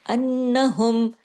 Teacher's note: ये double नोन है। तो ये डबल नून जब हम पढ़ेंगे तो लाजमी बात है कि आवाज देर तक नाक में छुपेगी। और आवाज को देर तक नाक में छुपाने का नाम ही गुना है।